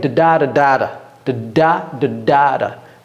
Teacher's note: Ça, c'est unstressed syllable et stressed syllable. Stress, c'est da. Unstressed, c'est de.